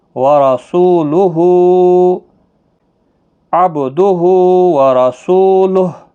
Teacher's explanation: وقف کی صورت میں ہا ساکن پڑھا جائے گا